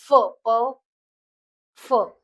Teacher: म्हणजे PHA एच येतोय, महाप्राण आहे